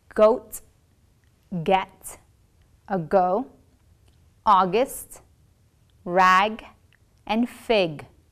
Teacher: the back of the mouth hold and release with a burst of air but this time your vocal folds will vibrate